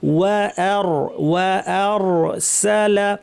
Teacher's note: সা আবার সিন পাতলা, অনেকে সব ভারী করে ফেলেন, বলে ফেলেন ওয়া আর সল, এইভাবে না, ওয়া আর সালা, ওয়া আর সালা আলাইহিম তয়রান, ত ভারী, র ভারী, রন।